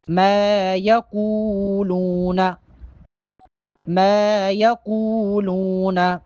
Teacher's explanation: میم پہ الف مدہ ہے، میم کو ایک الف کے برابر لمبا کر کے پڑھیں گے۔